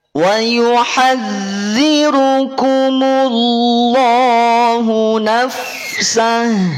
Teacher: Ingat, ha dia ada khofanya, ada lirihan suaranya. Sudah dialirkan suaranya, ya. Dia juga punya sifat yang namanya khofa.